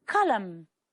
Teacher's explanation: The final N is silent.